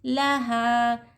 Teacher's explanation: अलिफ से पहले हरकत ज़बर अलिफ मत हो रहा, हा को हम 1 अलिफ की मक़दार खींचेंगे